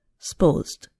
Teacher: a two syllable word supposed becomes more like one syllable